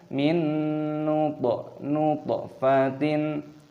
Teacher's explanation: toknya berharokat sukun, kita qalqalah, kita pantulkan suaranya